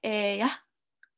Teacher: stop so you kind of wanna stop it's kind of almost it's not a silent a but you're kind of fading your a at the end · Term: glottal stop